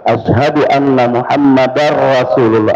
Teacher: anna Muhammadar langsung masuk ke ra karena tanwin ketemu ra